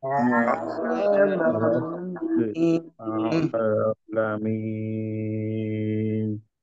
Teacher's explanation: শেষে নুন, নুনে গিয়ে একটু ধরবো।